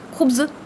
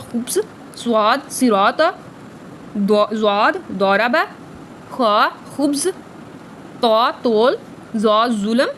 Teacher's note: हरूफ मुस्तइला वो हरूफ जो अपने अंदर एक मोटापा और भारीपन रखते हैं और इनको पढ़ते वक्त ज़ुबान का पिछला हिस्सा और ऊपर उठ जाता है